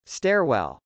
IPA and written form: stˈɛrwˌɛl (stairwell)